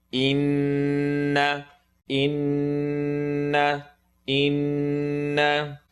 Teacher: Noon shadda, full nasal sound. Anytime there's a W on top of the noon, we make a full nasal sound.